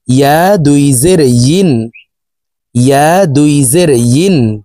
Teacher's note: হা দুই জের হিন, হামজাহ দুই জের ইন, ইয়া দুই জের ইন। জিব্বার মধ্যখান থেকে উচ্চারণ করতে হবে, কারণ ইয়ার মাখরাজ জিব্বার মধ্যখান থেকে হবে।